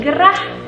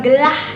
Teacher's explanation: Misalkan katanya adalah gerah, maka kita harus ucapkan secara jelas huruf R-nya menjadi gerah, jangan gelah. Nah, itu salah pengucapannya.